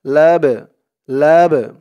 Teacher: এই বাটাকে একটু ধাক্কা দিয়ে পড়তে হবে, কারণ এই বাটা হচ্ছে কলকলার হরফ